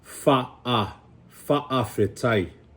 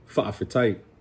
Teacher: it sounded like a glottal stop, right? It's in the back of your throat. It's fa'afetai.